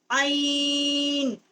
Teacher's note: ضا الف عین. یہ حروف حلقی ہے وسط حلق سے اس کا مخارج ہے